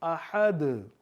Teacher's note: احد دال ہے تو قلقلہ کریں گے